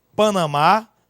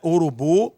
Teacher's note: Nós temos os oxítonos, que é quando a sílaba tônica é a última